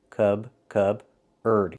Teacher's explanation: So the P is silent. Cubard. Use the sound like burger.